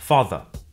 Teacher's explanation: Father ends in a simple schwa vowel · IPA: /ˈFɑː.ðə/